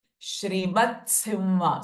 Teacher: the ta is half and immediately we are taking Simha. So it will sound like Shrimat Simha.